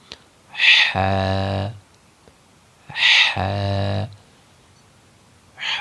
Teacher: حا کو ادا کرنے کا جو صحیح طریقہ ہے وہ یہ ہے کہ آپ سانس نکالیں گے حلق کے درمیان سے تو پھر یہ بآسانی ہا ادا ہو جائے گا.